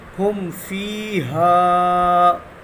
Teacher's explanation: یہاں پہ میم ساکین ہے اور میم ساکین کے بعد فا آ گیا تو یہاں پہ اظہار شفوی ہوگا